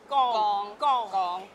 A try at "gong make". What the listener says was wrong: Ayya, your tone is wrong. Gong make. Gong make.